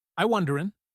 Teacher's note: The G is dropped from wondering.